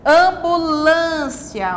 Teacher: o acento circunflexo foi empregado sobre a vogal A para indicar, né, o som fechado e também para indicar a sílaba pronunciada com mais força